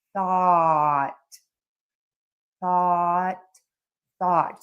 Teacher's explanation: start with the tongue out of the mouth, air is moving over the mouth. If you are a native speaker listening to this you kind of touch your teeth with your tongue.